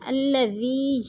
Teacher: زعم الذین، الذی یا ساکن سے پہلے ذال کے نیچے زیر ہے تو یا مدہ ہو رہا ہے۔ یا مدہ کو 1 الف 2 حرکات کے برابر ہم نے اس کو کھینچ کر پڑھنا ہے